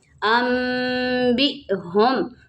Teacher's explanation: यहाँ पर मीम साकिन है, मीम साकिन के बाद हर्फ बा आ गया है। जब मीम साकिन के बाद हर्फ बा आ जाए तो मीम साकिन में इख्फा करेंगे। यहाँ पर हम गुन्ना करके पढ़ेंगे। किस तरह गुन्ना करेंगे, ये मीम साकिन है, मीम साकिन के बाद बा आ गया तो अम पे हमने गुन्ना किया है। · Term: इख्फा शफ़वी